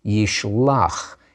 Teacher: In the imperfect, the guttural pushes that final vowel to be an ah sound.